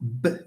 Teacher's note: So it's voiced B is a voiced bilabial there is vibration